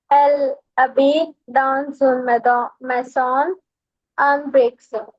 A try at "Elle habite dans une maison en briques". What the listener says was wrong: Good for you.